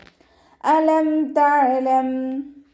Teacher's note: ഹംസയുടെ മഖ്റജ് വരുന്നത് അഖ്സൽ ഹൽക്കാണ്, തൊണ്ടയുടെ അവസാന ഭാഗം. ഹംസ ക്ലിയർ ആക്കിയിട്ട് ഉച്ചരിക്കുക കേട്ടോ.